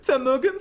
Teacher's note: they pronounce the V's with an F sound